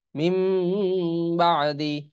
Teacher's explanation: মিম নুন পেশ মিম, এখানে দেখুন এই নুনের উপর মিম দেওয়া আছে, কারণ এই নুনটা মিম হয়ে যাবে, উচ্চারণে মিম আসবে, কারণ এই নুন সাকিনের পরে বা আসছে। নুন সাকিনের পরে বা আসলে ওই নুনটা মিমে উচ্চারণ হয়, এই জন্য মিম নুন জের মিম, বা আইন জবর বা, দাল জের দি, মিম বাদি। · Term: ইকলাব